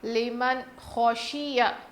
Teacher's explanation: نون ساکن کے بعد حروف حلقی میں سے خا آیا ہے، اسی لیے ہم نون کی آواز کو ظاہر کر کے پڑھیں گے